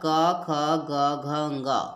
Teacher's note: व्यंजन वर्ण का जो पहला वर्ग है उसको कंठ वर्ण बोला जाता है क्योंकि इसका उच्चारण स्थान जो है कंठ है